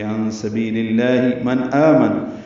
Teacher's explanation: نون ساکن پہ اظہار ہے، آگے حمزہ آ رہا ہے، اس وجہ سے اظہار حلقی ہے۔ آمن میں آ مد بدل ہے، دو حرکات لمبا کریں گے۔